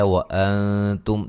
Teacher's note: نون ساکن کا باریک اخفا ہے، میم ساکن کا اظہار ہے، حرم را کو موٹا ادا کریں گے، جب وقف کریں گے میم ساکن ہو جائے گی، ملانے کی صورت میں نون تنوین کا یہاں اظہار ہوگا۔